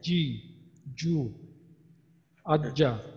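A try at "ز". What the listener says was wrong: যখন পেশ বললেন তখন বোধহয় একটু বেশি বের হয়ে গেল। হ্যাঁ, হাতে বোধহয় বাতাসটা স্পর্শ করছে।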